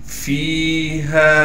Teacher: فا کے بعد یا مدہ ہونے کی وجہ سے فا کو ایک الف کی مقدار کھینچیں گے، اسی طریقے سے ہا کو بھی ایک الف کی مقدار کھینچ کر پڑھیں گے۔